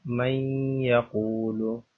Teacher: اس میں نون کی آواز بھی آنی چاہیے، نون اور یا کی آواز آپس میں مل جائے گی، مکس ہو جائے گی